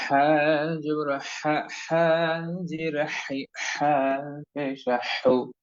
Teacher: এবং হা অক্ষরটি বা হরফটি আমাদেরকে হলকের মধ্যখান, অর্থাৎ গলার মধ্যখান থেকে, মাঝখান থেকে শো শো আওয়াজ করে সুন্দর করে বলতে হবে।